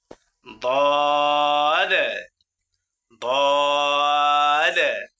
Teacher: 7 নং মাখরাজ জিহ্বার গোড়া যে কোনো একদিকের কিনারার উপরের মারির দাঁতের গোড়ার সঙ্গে লাগাইয়া একটি হরফ উচ্চারিত হয়।